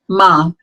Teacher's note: ma is a labial nasal sound